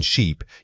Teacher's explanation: When you move to the long vowel like in sheep, you need to consciously stretch that sound out.